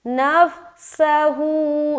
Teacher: आगे नफ्सहू, नून फा ज़बर नफ, सीन ज़बर सा, हा उल्टा पेश हू, नफ्सहू, सीन में सीटी की आवाज़ ज़ाहिर, नून को फा से मिला दिया, यहाँ पर जज़्म का कायदा है, नून मिल गया फा से, सीन को ज़बर के साथ पढ़ा जल्द और सीटी की आवाज़ ज़ाहिर करेंगे